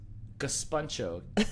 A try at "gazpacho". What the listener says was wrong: Still no N. There's no N there, right?